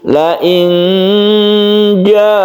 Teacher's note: Jim yang kita baca ikhfa ikhfa Hakiki jumlah hurufnya ada 15 disebut ikhfa karena cara membacanya itu adalah samar ketika kita membaca nun mati kita bersiap huruf Jim la inja jadi rongga mulut kita itu sudah kita persiapkan kan